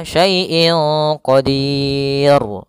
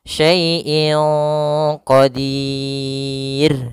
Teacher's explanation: huruf ra karena dia disukunkan, maka di sini dia jatuh hukumnya adalah hukum ra tipis yang kita namakan dengan ra tarqiq. Ra tarqiq tidak boleh dibaca qadir.